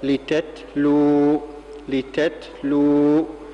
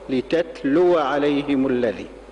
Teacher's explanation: يقف بسكون هذه الواو ويعني كده تصبح الواو مديه · كلمة لتتلو بارك الله فيكم هذه الواو مفتوحة عند الوصل كما سمعناها لتتلو عليهم الذي، أما لو وقف القارئ على هذه الكلمة يقف بسكون هذه الواو ويعني كده تصبح الواو مدية فتصير الكلمة عند الوقف هكذا لتتلو، لتتلو.